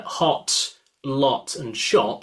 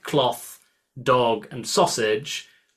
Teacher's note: in my accent I've got what's called a lot cloth merge